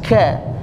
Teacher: Kalau kaf, k tapi berhembus